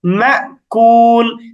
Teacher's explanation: যেমন আমরা সূরা ফিল মশ করেছি, সেখানে শেষের আয়াতটা এমন ছিল, ফাজআলাহুম কাআসফিম মাকুল, মাকুল। তো এখানে আমরা মা এরকম একটু ধাক্কা দেওয়ার মতো উচ্চারণ বা একটু থেমে যাওয়ার মতো উচ্চারণ করি